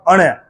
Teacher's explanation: न ण की आवाज मुख और नाक दोनों से निकलती है